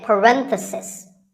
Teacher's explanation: if you talk about just one bracket you say parenthesis the stress is on rend if you're talking about both the plural is parentheses the last